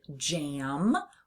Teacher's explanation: We hear that nasalized a sound in the word jam or the word ants.